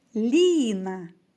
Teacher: Ліна так два на який склад падає наголос Ліна на перший можемо сказати що перший склад наголошений